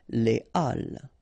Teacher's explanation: So, but in that case still, even if you've got this H, okay, it belongs to this aspiré group of words, so containing this H, okay, and it means that you won't have the possibility to make the liaison between your article and your word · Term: H aspiré